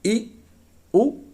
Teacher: देखिए, पहला है संवृत्त स्वर। जिह्वा ऊपर की तरफ उठ जाती है।